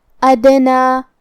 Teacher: کلمت ادنا میں یہاں حرف الدال ہے اور اس پہ جزم ہے تو یہاں ہمیں حرف الدال کو قلقلہ سے پڑھنا ہے اور قلقلہ کا معنی ہے حرف ساکن کو ہلانا، لہذا ہم دال کو ہلاتے ہوئے یہ کلمہ کو پڑھیں گے